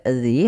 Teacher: maka ini dinamakan dengan Mad Thobi'i Nah di sini kita lihat zzi harakatnya kasrah bertemu Ya Sukun maka dinamakan Mad thbii'i panjangnya dua harakat